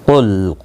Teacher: قاف مستعلیہ ہے، پر پڑا جائے گا، لام ساکن کو ہلانا نہیں